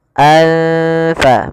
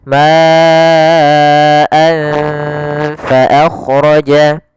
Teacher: makhraj daripada Fa adalah gigi atas menempel dengan bibir bawah